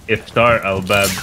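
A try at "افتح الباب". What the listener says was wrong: It's not Iftar! Iftar! No, there's no R. Iftar. Not Iftar.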